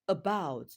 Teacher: the word about has its stress on the second syllable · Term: word stress